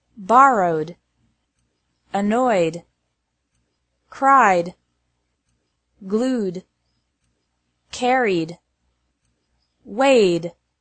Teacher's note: ED is pronounced like D after verbs ending in a vowel sound